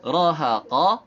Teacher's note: Roha ini tanpa mengangkat pangkal lidah. Kalau qafnya harus diangkat pangkal lidahnya sehingga suara qaf itu menjadi terdengar lebih tebal karena dia isti'la